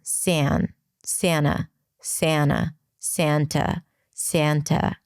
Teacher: Sa, that's the a as in cat, sa, but before an N, it's modified.